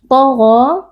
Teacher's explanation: huruf ta dan huruf ghain dua-duanya huruf tafkhim dibaca dengan mengangkat pangkal lidah. Gha mad tabi'i karena ada alif maksurah yang sebelumnya berharakat fathah dibaca panjang 2 harakat.